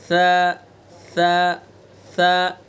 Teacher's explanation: तो सा का मखरज ज़बान की नोक और सना उलिया का किनारा